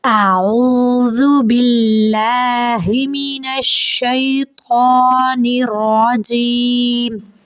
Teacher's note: اس میں آپ نے دھیان رکھنا ہے، ایک تو آئین کی آواز پہ، آئین حلق سے ادا ہوگا، حلق کے درمیان والے حصے سے جب آپ ادا کرنے لگے تو حلق کو تھوڑا سا دبا کے اس کی آواز نکالیں گے۔